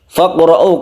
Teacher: qafnya ini qalqalah sughra